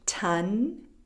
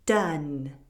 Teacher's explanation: The T sound is voiceless and the D sound is voiced.